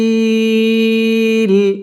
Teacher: মদের হরফের বামের হরফে ওয়াকফ মধ্যে আরজি এখানে তিন আলিফ টান দিয়ে ওয়াকফ করতে হবে